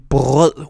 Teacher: Whenever the R is pronounced, it's usually a deep guttural sound